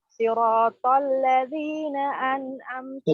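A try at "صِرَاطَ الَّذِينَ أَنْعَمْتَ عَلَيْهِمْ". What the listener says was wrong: تفخيم الصاد أكثر. صراط تفخيم.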